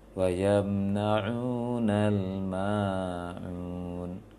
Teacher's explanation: ma-nya terbawa irama sehingga ma-nya berlebih dari mad dua rakaat dari kata-kata yang sebelumnya